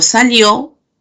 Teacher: Cuando digo salió, al ser una oración enunciativa, va a ser descendente.